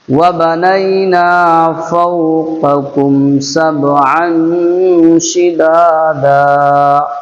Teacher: پہلے بڑا قاف پھر چھوٹا قاف، تو اس کو حلق سے نکالنا ہے، اس کو حلق کے اوپر سے نکالنا ہے۔